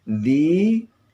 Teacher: ada mat tabi'i, panjangnya 2 harakah